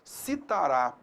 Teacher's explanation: a tonicidade recai sobre a última sílaba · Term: oxítona